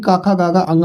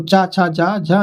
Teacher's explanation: का वर्ग होता है कंठ से और चा वर्ग तालु से